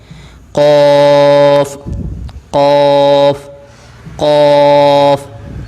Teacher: زبان کی جڑ اوپر والے تالو کے نرم حصے سے لگے تو یہ ادا ہوگا قاف